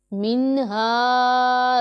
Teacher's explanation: یہ والا ہا حلق کے نیچے والے حصے سے ادا ہوتا ہے، اس لیے اسے دوسرے والے ہا سے مختلف ذرا پڑھا جاتا ہے، اس کا ہم نے دھیان رکھنا ہے اچھے طریقے سے۔